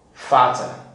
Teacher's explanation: These are the alveolar plosives produced with the front rim of the tongue placed along the upper teeth ridge, thus blocking the air passage through the mouth, okay, and allowing it to come out with a puff.